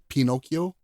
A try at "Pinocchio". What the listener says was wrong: Pinocchio. Pinocchio. I don't think there's an accent on the I.